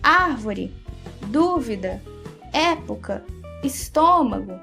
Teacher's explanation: viu só a sílaba tônica dessas palavras é a antepenúltima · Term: proparoxítonas